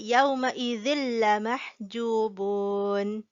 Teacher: And here we silent the n sound in the tanween. We do not say yawma idhin lamah, but we say yawma idhin lamahjubun.